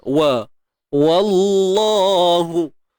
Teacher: Jadi tebalnya pada kalimah Allah aja. Wa ni usah dibawa sekali.